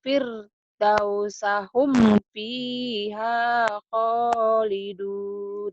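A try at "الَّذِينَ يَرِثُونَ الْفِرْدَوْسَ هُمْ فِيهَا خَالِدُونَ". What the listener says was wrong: Tuh bisa, tapi kan di sini tadi disentak. Kenapa disentak? Ini idhar, idhar komari. Kamu masih nahan di sini. Alladzina yaritsunal firdausa hum fiha khalidun itu.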